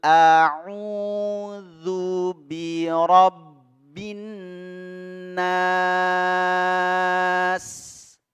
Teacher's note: huruf Sin yang disukunkan kita baca waqaf berhenti di situ ya sinnya dalam kondisi hams ya jadi mendesis